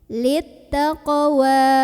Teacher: Maka cara membacanya dipantulkan dengan pantulan yang kecil. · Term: qalqalah sugra